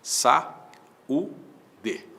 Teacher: existe um hiato, a segunda vogal do hiato é U, esse U é tônico